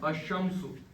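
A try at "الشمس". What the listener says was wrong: शाबाश शाबाश।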